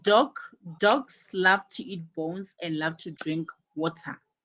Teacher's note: My first verb is love and my second verb is drink. So my second verb, drink, takes the stress.